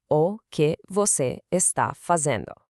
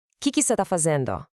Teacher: The phrases o que você or o que é que você almost always collapse into this ultra-efficient rhythmic prefix, que você.